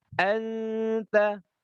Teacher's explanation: Harus baca tipis in kuntum dibaca tipis, dengungnya dibaca tipis dan dibaca panjang 3 harokat dengungnya. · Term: ikhfa hakiki